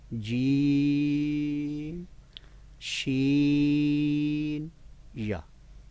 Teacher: دوبارہ ذہن میں رکھ لیں، درمیانی زبان کا حصہ یعنی زبان کا درمیانی حصہ اور اس کے مقابلے میں اوپر کا درمیان تالو۔ اب درمیان تالو سے جب وسط زبان یعنی کہ زبان کا درمیان جب ٹچ ہوگا تو پھر یہ تینوں حروف ادا ہوتے ہیں